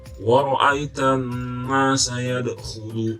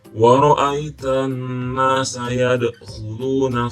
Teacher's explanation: ini ada qalqalah pantulan yad